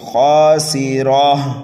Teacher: کرۃ، یہاں پر گنہ نہیں کریں گے، کرۃ خاسرہ، خا کو پر کر کے پڑھنا ہے، ایک الف کے برابر کھینچنا ہے، سین کو سیٹی کی آواز دے کر کے پڑھنا ہے، را کے اوپر زبر ہے، را کو پر پڑھیں گے اور اس گول تا کو ہا سے بدل دیں گے، خاسرہ۔